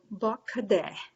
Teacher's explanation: notice that there's a little emphasis on the ba